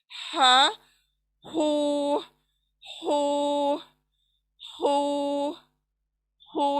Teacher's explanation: झरने की आवाज आनी चाहिए, क्योंकि ये सेंटर ऑफ द थ्रोट से निकल रहा है